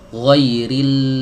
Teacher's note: Suaranya keluar dari pinggir-pinggir lidah. Ya, ibarat nih lidah, ya. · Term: huruf lam